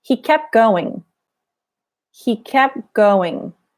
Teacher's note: So the T disappears. The P starts to blend into the G.